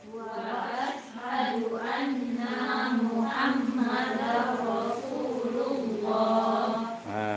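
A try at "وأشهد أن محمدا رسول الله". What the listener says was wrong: Di sini sering kepanjangan nah ya. Ada ha, hati-hati.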